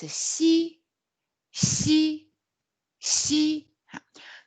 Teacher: the tongue tip is close to the lower teeth